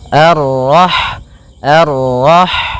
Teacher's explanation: Ha yang berharakat sukun. Dan sifat ha itu yang paling mencolok adalah sifat hamnya yaitu mengalirnya nafas ketika kita membacanya. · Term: sifat hamsnya